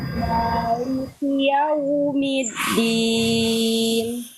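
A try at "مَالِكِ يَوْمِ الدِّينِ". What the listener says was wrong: Nah, pindah mi ke dalnya jangan diperlambat. Mid gitu ya. Mid.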